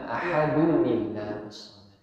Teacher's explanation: Jadi teorinya tadi kalau ada tanwin an-in jumpa hamzah wasal, maka dia dikeluarkan nunnya.